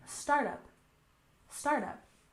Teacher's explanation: And next we have startup. We stress the first syllable, startup, startup.